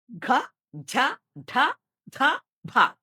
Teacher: ഈ മൃദു എന്നുള്ള ഗ്രൂപ്പിനോട്ു കൂടി ഹ ചേരുമ്പോഴാണ് ഘോഷങ്ങൾ.